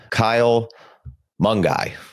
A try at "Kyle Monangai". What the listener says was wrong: Kyle Monangai. Yeah, Monangai. Missed a syllable.